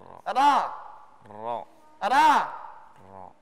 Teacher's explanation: Mengucapkan ra yang benar itu ujung lidah itu menyentuh bahagian gusi atas, gigi seri yang dekat nih, tapi jangan sampai di giginya. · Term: huruf ra